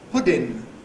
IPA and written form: ˈpʊdɪn (pudding)